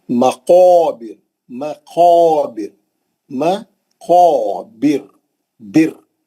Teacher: مستعلیہ کا ہے، گول منہ سے پڑھیں گے، اٹھا کے پڑھیں گے، بلند کر کے پڑھیں گے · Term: موٹا